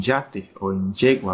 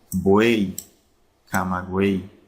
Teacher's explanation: Estos dos ejemplos son ejemplos muy peculiares porque aunque terminan en una Y, que para los efectos del alfabeto es una consonante, pues al ser pronunciadas, al estar al final de palabras, al ser pronunciadas, se pronuncian como una I latina